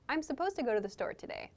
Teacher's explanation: connecting to the sound in to so supposed to slowly but in fast speech we connect the T and the D sounds together to make supposed to I'm supposed to go to the store